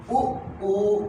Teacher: ऐसा स्वर जिसको बोलते इसमें हमारा मुख क्या हो जाए वृत्त के आकार का हो जाए वृत्त बन जाए जी वृत्त कैसा होता है गोल होता है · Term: वृत्त मुखी